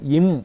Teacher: இதழ் மூடி மூக்குல காத்து வரும்